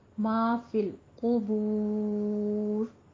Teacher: بور میں واو مدہ آ رہی ہے، اس لیے اس کو بھی دونوں ہونٹ گول کرتے ہوئے، لیکن واو مدہ کے بعد ہماری آیت کمپلیٹ ہو رہی ہے، ہم وقف کر رہے ہیں تو یہاں پہ ہم مد آرس وقفی کریں گے، اس کو 6 کاؤنٹ کرنا ہے، ٹھیک ہے. 6 حرکتوں برابر لمبا کر کے آپ نے وقف کرنا ہے